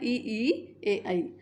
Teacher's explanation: अग्र स्वर जिनके उच्चारण में जीभ का अगला भाग सक्रिय रहे